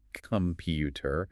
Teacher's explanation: Stress is on the second syllable. Computer. The first and last syllables weaken to the schwa.